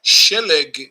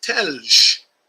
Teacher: the sh sound or the S sound is flip-flopped with the T sound